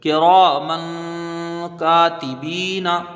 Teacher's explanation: کاف کے نیچے زیر ہے، اس کو جلدی پڑھا جائے گا، را میں را کے ساتھ الف مدہ ہے، اس کو ایک الف کی مقدار کھینچ کے پڑھیں گے، را کو اوپر پڑھیں گے کیونکہ زبر ہے، میم کے اوپر دو زبر کی تنوین ہے، تنوین کے بعد حروف اخفا کا کاف ہے تو یہاں ایک الف کی مقدار اخفا ہوگا، یعنی وہ ناک میں اس کی آواز کو چھپا کے پڑھیں گے۔ کاف میں ایک الف کی مقدار رکھیں گے، کاف کے ساتھ الف مدہ ہے۔